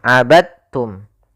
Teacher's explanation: Karena memiliki makhraj yang sama dengan ta, dal digabungkan ke dalam ta, sehingga dibaca langsung dengan bunyi ta. · cara membacanya yaitu masukkan huruf dalnya kepada huruf ta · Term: idgham mutajanisain